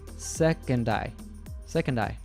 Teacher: The D from second links to the pronoun I.